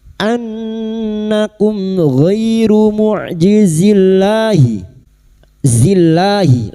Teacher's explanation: Lam jalalah yang didahului kasrah dibaca tarkik.